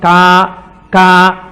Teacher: కా కా పలకాలంటే ఎక్కడ పలకాలి? కంఠం దగ్గర పలకాలి.